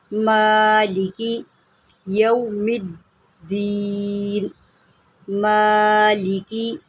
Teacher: اب میم کے اوپر کھڑا زبر ہے، اس کو ایک الف کے برابر جو ہے آپ نے لمبا کرنا ہے